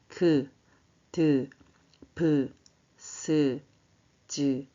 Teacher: 예사 소리는 성대를 편안하게 둔 상태에서 발음하는 것이고 숨이 거세게 나오지 않아요.